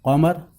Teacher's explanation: گاؤں میں اور دیہاتوں میں اس کو بڑی کاف بھی کہا جاتا ہے، لیکن اصل اس کا نام ہے قوف، جو حروف حلقی میں شمار ہے، حلق سے نکالا جاتا ہے قاف